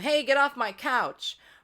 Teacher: my vocal folds slam together to make that loud sound. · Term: yelling